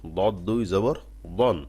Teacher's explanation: জিহ্বার গোড়া হালকা উপরের দিকে উঠবে আইনের আভাস পাবে